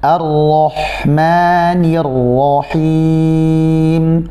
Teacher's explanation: Ro tetap tebal, tapi huruf hamzahnya jangan sampai terbawa tebal karena huruf ro.